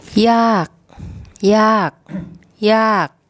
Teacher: an unreleased K as a final consonant